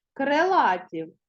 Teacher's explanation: наголос падає на другий склад а тому і наближене до е